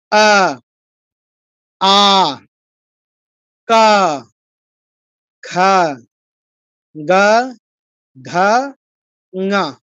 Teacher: জিহ্বার গোড়াটা লাগছে একদম কন্ঠে আ খা গা ঘা গা সবগুলো একদম কন্ঠে লেগেছে জিহ্বার গোড়াটা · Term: কণ্ঠবর্ণ